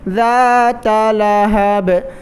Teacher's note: با پر میں قلقلہ کر رہا ہوں